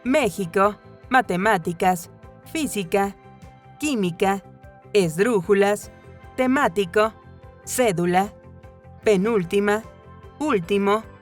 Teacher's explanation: Las esdrújulas son las palabras cuya sílaba tónica recae en la antepenúltima sílaba y siempre se acentúan. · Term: Palabras esdrújulas